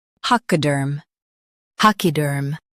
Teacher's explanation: pac i durm pachyderm pac i durm pachyderm Stress pac and soften durm. · Stress pack and soften derm.